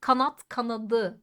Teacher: kanat kanadı kanatı demiyoruz değil mi t D'ye dönüştü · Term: ünsüz yumuşaması